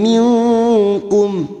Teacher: Lim, masuk ke huruf berikutnya, lim minkum, nun sukun bertemu kaf, ikhfa hakiki, kita samarkan bunyi nun sukun dan mendengung selama 3 harokat